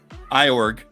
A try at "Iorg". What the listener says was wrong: Org, yeah, the I silent.